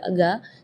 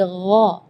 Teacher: Di ayat ini yang pertama di makhraj huruf ghain ya, ghairil maghdubi ya, perlu diperhatikan bukan G, bukan huruf G ya, bukan ga, tapi gha. Jadi kalau ga itu dia makhrajnya dari lidah. Ya, tapi kalau huruf ghain itu dari bagian tenggorokan ya. Jadi gha.